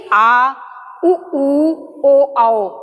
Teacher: पश्च यानी कि पीछे का भाग, तो जिसमें हमारी जीवा के पश्च भाग का प्रयोग होता है उसे हम क्या कहते हैं? पश्च स्वर कहते हैं।